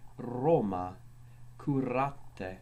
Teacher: R is all er in Latin. R was always trilled, hence it was called the littera canina, because it sounds as if you're growling, such as in the word Roma, curate.